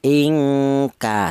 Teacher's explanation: huruf nun ini makhrajnya di ujung lidah menyentuh langit-langit mulut, kemudian berjumpa dengan huruf kaf yaitu berada di pangkal lidah. Pangkal lidah itu lidah bagian belakang lah, antara langit-langit mulut ke pangkal lidah ini sangat berjauhan. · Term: ifa abad